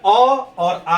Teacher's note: कंठ, कंठ है। तो कंठ से उच्चारित होने वाले जो स्वर है आपका, तो वो है अ और आ है।